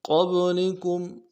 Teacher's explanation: قبلکم قاف کو موٹا کرنا ہے اور با کے ساتھ ملانا ہے. با قلقلہ میں سے قلقلہ کرنا ہے. قبلکم لیکم لام کو باریک کرنا ہے.